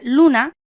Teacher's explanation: Ejemplo: la palabra luna no lleva tilde porque tiene su fuerza de acentuación en la penúltima sílaba, pero termina en vocal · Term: palabras llanas